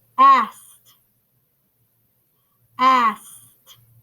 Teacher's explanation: do you guys hear an e and a d at the end of that word no way friend i hear a t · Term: t sound